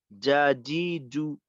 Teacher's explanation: পিছনের অংশ যদি ব্যবহার করা যায়, আর মনে হচ্ছে যে কিছুটা বাতাস বের হয়ে যাচ্ছে, ওই যেটা বললাম, তো বাতাসটাকে একটু নিয়ন্ত্রণ করে যা, জি, জু। যদি আমি বাতাস বের করে বলি তখন উচ্চারণটা শুনতে অনেকটা যা, জি, জু, এমন একটা এই ধরনের একটা ঝিরঝিরে আওয়াজ থাকে